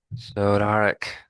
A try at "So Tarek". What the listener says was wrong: And so you missed the T.